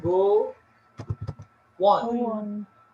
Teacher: Nah, go on-nya ini itu connection word. Antara go dan on itu disambung ada kata W di sana